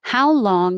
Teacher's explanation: you start high with the question word and you start going down. And then if there's an important word that is the point of your question, you can go back up on it.